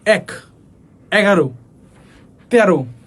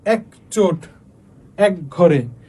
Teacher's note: একযুক্ত শব্দে অথবা 1, 11, 13 এই 3টা শব্দের ক্ষেত্রে কি হয়? এ বিবৃত উচ্চারিত হয়।